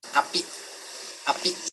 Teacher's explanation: There are glottal stops at the beginning and end of that word. Api, api. And there's a bit of non-modal voicing at the beginning of the vowel in this word.